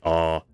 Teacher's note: this is where the tongue is physically in the mouth so when you say ah your tongue is physically down low in your mouth